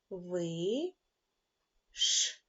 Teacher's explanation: звук ш це приголосний твердий глухий